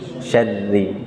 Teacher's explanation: Kalau syarri itu tafkhim, tebal, antum tipiskan.